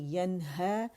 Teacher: ین نون کا اظہار کر رہے ہیں ہا کی وجہ سے، حروف حلقی میں سے ہا آ رہا ہے اس لیے، اور ہا کی آواز کو الف مقصورہ 2 کاؤنٹ کے اوپر کھینچ رہی ہے.